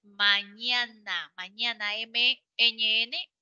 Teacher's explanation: Nasal y oral. El aire sale por la boca y por la nariz. Y como sale por la boca, algunos le llaman oro, boca, nasales, porque sale al final por la boca y por la nariz. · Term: sonidos nasales